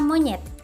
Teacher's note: Vokal E tengah bawah depan tak bundar